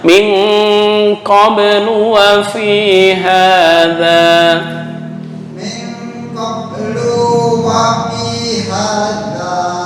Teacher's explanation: non mati bertemu qaf atau ikhfa ditekan agak lama.